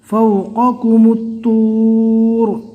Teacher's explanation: قوف کو پور پڑھنا ہے اور کاف کو نارمل پڑھنا ہے، ایسا نہ ہو کہ قوف کو پور پڑھتے ہوئے کاف کو بھی پور پڑھ لیں۔